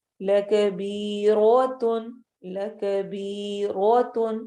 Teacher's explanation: اس کے اوپر زبر ہے اس لیے رو کو ہم ہیوی کر کے پڑھیں گے موٹا پڑھیں گے